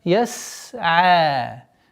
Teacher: Сукуном син со свойством свиста ярко выражается. Яс'а. И при остановке долгота в размере 2 огласовок.